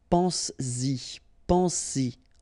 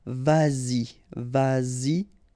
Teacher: you will have to put back this S just to produce it orally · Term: liaison